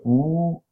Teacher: So oo is high, back, tense, rounded vowel.